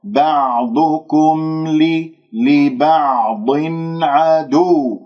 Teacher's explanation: اسمع صوت الميم المظهرة